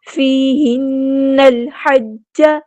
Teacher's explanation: فیہن الحج، نون پہ غنہ زمانی ہو رہا ہے، 2 کاؤنٹس ہم نے یہاں پہ رکنا ہے، نون کو ہم نے لام کے ساتھ ملا دینا ہے، حمزۃ الوصل ہمارا ڈراپ ہو جائے گا، لام یہاں پہ لام قمری ہے، اس کو ہم ظاہر کریں گے، ہا کو وسطی حلق یعنی مڈل تھروٹ سے ادا کریں گے، حج۔